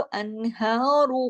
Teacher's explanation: और अगर हम रुकेंगे तो अनहार, फिर भी हम रा को मोटा ही करके छोड़ेंगे, क्योंकि हा जो खड़ी जबर है उसका असर पड़ेगा, और अगर मिला के पढ़ेंगे तो भी रा मोटा ही पढ़ा जाएगा, क्योंकि उस पर पेश है, दम्मा है। दोनों सूरतों में रा मोटा पढ़ा जाता है, जब जबर या पेश हो तो।